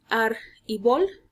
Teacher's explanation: que la palabra árbol sólo tiene dos sílabas ar y vol la mayor entonación de voz o la sílaba tónica recae en la sílaba ar